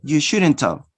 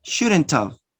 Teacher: Notice no ha sound. You omit the ha sound. You just say shouldn't have. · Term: elision